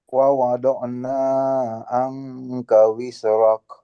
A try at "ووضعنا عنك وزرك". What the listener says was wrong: Nah, pendek lagi nanya, tidak terlalu panjang, pendek lagi.